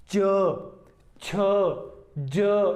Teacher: जब जैसे च हम बोलते हैं ना, च जिह्वा और तालु का संयोग हुआ, लेकिन उसके बाद एक रगड़ के साथ जो है इनका उच्चारण होता है, घर्षण के साथ उच्चारण होता है। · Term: स्पर्श संघर्षी